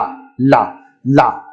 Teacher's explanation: ला जब आप बोलते हैं, जो आपकी जीवा है ये दंत पर स्पर्श कर रही है।